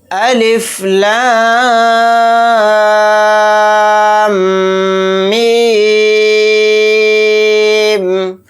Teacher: میم کے اوپر تشدید ہے تو اس کے اندر غنہ بھی کریں گے